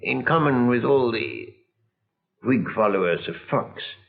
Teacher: he pronounces the lot vowel with unrounded lips so at times it almost sounds like ah